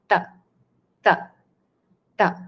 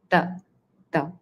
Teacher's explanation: where you touch the tongue to the back of your upper row of teeth inside your mouth which gives this sound t. So your tongue is totally touching the teeth.